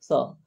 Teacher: है सांस भारी हो रही है सांस निकल रही है स तो देखिए एक सांस का झोखा निकल रहा है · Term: अघोष